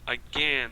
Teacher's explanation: Veja que o A foi reduzido a schwa. Esse A que não recebeu o acento, não recebeu o stress, digamos assim.